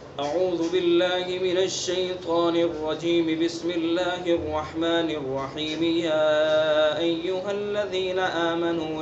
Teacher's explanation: یہ وصل کل ہے، یعنی اعوذ باللہ من الشیطان الرجیم پر بھی وقف نہیں کرنا، اس کا وصل کرنا ہے بسم اللہ سے